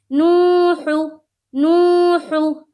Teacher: ہا کو حلق سے نکالنا ہے، حلق ہے اس کا مخرج، ٹھیک ہے؟ حلق سے نکالنا۔